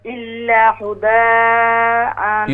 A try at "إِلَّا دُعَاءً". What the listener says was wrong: یہ هدى نہیں ہے دعاء دعاء